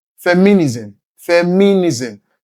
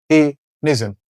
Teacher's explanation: Places stress on the ni, which is the third syllable.